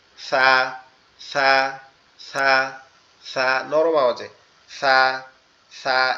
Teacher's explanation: সা হচ্ছে আমাদের জিহ্বার আগা সামনের দুই দাঁতের আগার সঙ্গে লাগবে